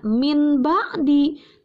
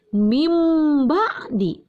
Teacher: mirrorop maaf ada kata mimba'di ini mint diakhiri dengan nun mati nun mati bertemu dengan ba disebut dengan iqlab dan cara membacanya harus berubah menjadi m · Cara membaca nun matinya dan tanwinnya akan berubah menjadi M.